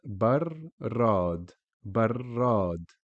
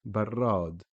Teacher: pronounced twice with the first imaginary ra having a sukoon. So you'll say bar, and then you will pronounce the fatha ra, barrad, which means fridge. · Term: shadda